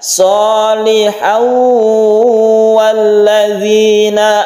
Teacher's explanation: Tanwinnya itu masuk ke huruf waw sehingga timbullah tasydid waw. Tasydid waw ini bentukan dari idgham bi gunnah.